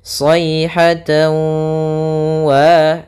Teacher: Jadi ketika melafalkannya maka harus kita tahan dulu gunnahnya. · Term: idgham bi gunnah